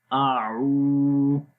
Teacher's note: آ کی آواز سمپل رہے گی، آ لمبا نہیں کریں گے۔ عو، عین کی آواز گلے کے درمیان والے حصے سے اور لمبا بھی کریں گے۔